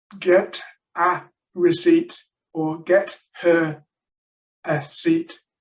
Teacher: The linking between the words means you don't know when one word starts and the next one ends.